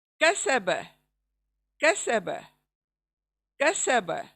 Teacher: Simple काफ है, इसलिए हलक के अंदर मत जाएं, इस काफ को लेकर सिंपल अदा करें, यानी मुंह के तरफ से अदा करें, हलक में मत जाएं।